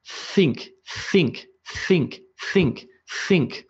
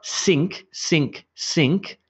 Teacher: think think it's not sink sink sink its think think think I'm blowing the air between my teeth and my tongue